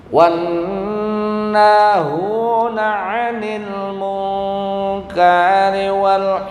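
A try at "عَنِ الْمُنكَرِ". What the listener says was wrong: munkari rinya pendek. 'Anil munkari wal kayaknya pendek aja, jangan panjang. Munkari wal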